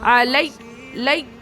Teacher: علیہ علیہ، آ میں حرکات، لا میں بھی حرکات ہے اور یا بھی حرکات ہے، جلدی جلدی پڑھنا ہے، زبر ہے نا تو جلدی پڑھنا ہے، تو کیسے پڑھیں گے؟ علیہ، لام سے یا کو ملانا ہے، تشدید ہے تو تھوڑا رکنا ہے، اس کے بعد پھر یا ادا کرنا ہے، علیہ، سختی کرنا ہے، سختی کیسے ہوگی؟